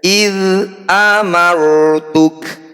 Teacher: Jadi tafkhim itu artinya tebal bunyi ro ini kita harus kurangi getarannya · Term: Ro tafkhim